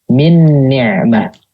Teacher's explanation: Jadi huruf pertamanya itu nggak ada sama sekali. Jadi gunahnya itu berasal dari huruf yang kedua. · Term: idgham kamil